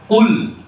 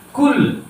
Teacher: Jadi qaf dan kaf itu makhrajnya atau letak getaran suaranya itu berdekatan ya. Nanti kalau qaf itu pangkal lidah bagian dalam ya. Kaf itu depannya sedikit.